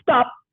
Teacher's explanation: when you say stop, your lips remain closed and you don't release it. So it's the unreleased pa.